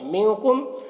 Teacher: نون میں اخفا کرنا ہے اور میم میں اظہار شفوی ہو رہا ہے، جلد پڑھنا ہے۔